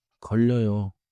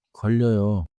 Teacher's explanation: 걸려요에서 걸 다음에 혀가 바로 이어져요.